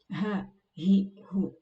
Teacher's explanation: Huruf a itu seperti halnya huruf hamzah, keluarnya sama makhrajnya di tenggorokan, di pangkal tenggorokan